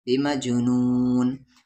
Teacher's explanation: جیم ساکن ہے قلقلہ ہوگا، نون کے ساتھ نو، اور کھینچ کر نون ملا دیں گے، بمجنون۔